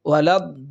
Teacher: এখানে চার আলিফ পরিমাণ টেনে আমাদের পড়তে হবে অর্থাৎ এইখানে লামের জবরটাকে দোয়াদের সঙ্গে মিলিয়ে দিতে হবে লাম দবর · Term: মধ্যে লাজিমে কালমি মুসাক্কাল